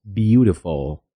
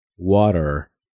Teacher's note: la T entre dos vocales se suaviza y adquiere un sonido más parecido a una R suave